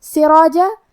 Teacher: یہاں را پہ زبر ہے تو یہاں را کا حکم ہے تفخیم